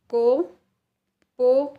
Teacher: உயிர்மெய் நெடில் எழுத்துக்கள் கோ போ இந்த மாதிரி எழுத்துக்களுக்கு மாத்திரையின் அளவு 2